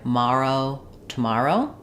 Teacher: We tend to say that with just a schwa on the first syllable